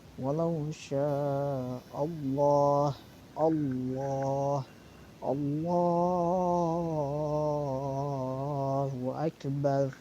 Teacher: Di sini ada lafaz Allah dan sebelumnya ada huruf berharokat fathah. Nah, maka hukum bacaannya adalah tafkhim atau lam tafkhim. Lamnya dibaca tebal.